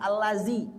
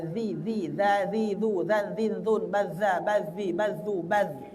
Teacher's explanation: yang ada alladzi ujung lidah ke gigi atas